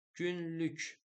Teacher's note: Günlük vurğu ikidədir. Burada ü saiti var. İncə, qapalı və dodaqlanandır.